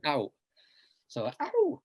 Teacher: Yeah, I mean, so Ao is a very unusual name with only 2, but you have to sound both the A and the O, but all the vowels are also short. There are no long vowels.